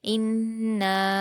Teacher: نون مشدد کو غنہ کے ساتھ پڑھا جاتا ہے، اور یہاں نون پر الف مدہ ہے اور اس کے بعد حمزہ دوسرے کلمے میں ہے، اس لیے مد منفصل ہوگا۔ نون کے الف مدہ کو 4 حرکات کھینچ کر پڑھیں گے